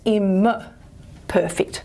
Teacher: the nasal assimilates in place to the following stop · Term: nasal stop assimilation